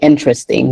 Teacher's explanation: in American English, we say interesting. We swallow some of the syllables.